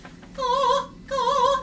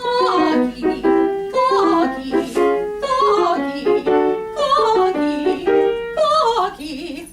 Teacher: It's not a G, but it is still a K that's not really aspirated. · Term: Italian K